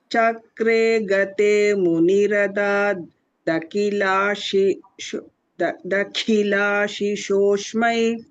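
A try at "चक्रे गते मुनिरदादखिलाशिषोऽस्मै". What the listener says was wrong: ஷோக்கு அப்புறம் இஸ் சொல்லணும். ஷோஷ்னு வந்துடக்கூடாது. ஏன்னா ஷீ ஷோ எல்லாமே வருதுங்க. All the other places are correct பகினி.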